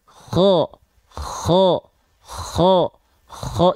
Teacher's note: dia dilafalkan dari tenggorokan paling atas · huruf kho ini dilafalkan, nafasnya, karakternya seperti mendengkur